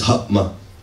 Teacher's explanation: when there's a stress syllable before it becomes a glottal stop and an m